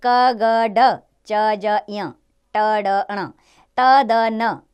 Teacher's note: वायु मुख से कम मात्रा में बाहर निकलती है वे व्यंजन अल्प प्राण कहलाते हैं